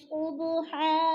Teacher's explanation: حن دو زبر تنوین کو ایک الف میں بدل کر پڑھنا ہے